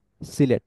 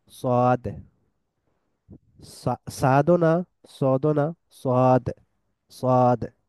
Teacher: সিন এবং সোয়াদের উচ্চারণের জায়গাটা একই হওয়ার পরেও এই দুইটার মধ্যে কিরকম পার্থক্য হইতেছে, পার্থক্যটা হইতেছে হেভিনেসের মধ্যে বা তাফখিমের মধ্যে